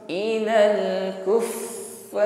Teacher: Huruf fa tasydid, sifatnya hamas, ada nafas yang berhembus ketika mengucapkan fa. Maka ketika bertasydid, fa-nya ini bunyi hurufnya jangan putus ya.